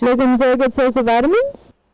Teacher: this sentence is pretty much does not have any rise or fall all the way till the word vitamins, where we have a very sharp rise. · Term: rising statement